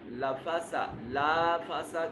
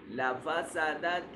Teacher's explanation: اس لام کو لمبا نہیں کرنا